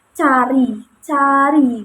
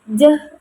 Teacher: kata cari ini termasuk pada kata tak bersuara. Sedangkan pada kata jalan ini termasuk pada kata bersuara.